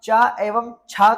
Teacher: तो आप च एवं छ का जब उच्चारण करेंगे तो आप पाएंगे आपकी जीभ का जो बीच का भाग है वह आपके ऊपर तालु से लग रहा है